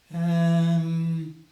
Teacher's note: the most common English thinking sound is um and this is often stretched out if you need more time